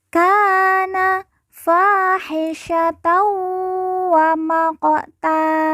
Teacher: qof sukun kita baca pantul karena merupakan huruf Qalqalah ka fahisyat waqta kemudian Tan di ujung karena waqaf atau berhenti